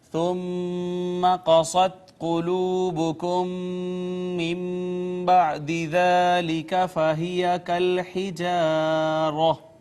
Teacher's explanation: میم ساکن کے بعد دوسری میم آ گئی، ادغام شفوی · نون ساکن کے بعد با آئی، با حرف اقلاب تھا، اس نے ماقبل نون ساکن کو چھوٹی میم سے بدل دیا